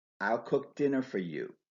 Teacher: only the verb cook and the noun dinner are stressed